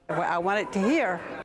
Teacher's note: The second feature here is a glottal replacement of final consonants. You can hear the glottal stop instead of a T.